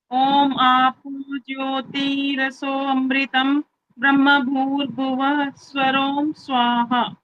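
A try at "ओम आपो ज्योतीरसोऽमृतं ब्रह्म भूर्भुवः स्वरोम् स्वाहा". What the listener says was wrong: यहाँ पर जब ओम आपो ज्योति रसो अमृतम नहीं बोलना होता, बोलने के समय में बोलना होता है रसोमृतम। वो जो अवग्रह है ना, ऐसे अ वाला चिन्ह है, वो यहाँ पर उच्चारण नहीं करना होता। अमृतम अलग से नहीं बोलना होता है।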